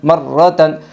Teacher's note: رائے مشددہ کے اوپر زبر ہے اس لیے رائے مشددہ پر ہوگی